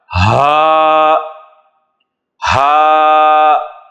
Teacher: اور اس کا مخرج جو ہے وہ انتہائے حلق یعنی حلق کا آخری حصہ ہے، تو یہاں سے ادا ہوگا ہا، ہا، اور اسی طرح اسی جگہ سے حمزہ، حمزہ، اس کا مخرج بھی انتہائے حلق ہے۔